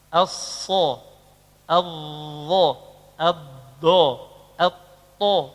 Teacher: Lidah dan langit-langit menyatu, nempel. Tertutup aula tengah lidah. Nah, ini efeknya adalah pengucapannya berat.